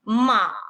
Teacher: Ma en tono tercero, descendiente, ascendente, empezando por un tono bajo, cayendo hacia los graves y subiendo hacia el tono alto